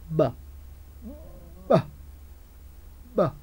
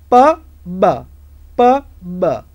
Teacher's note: When air comes out, two lips block the passage.